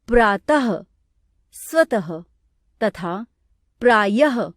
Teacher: हिंदी में प्रातः तथा सुबह शब्दों की अंतिम ध्वनि के उच्चारण में अब कोई अंतर नहीं रह गया है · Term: विसर्ग